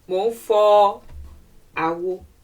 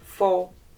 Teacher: I'm going slightly higher in tone. I'm moving from do to re.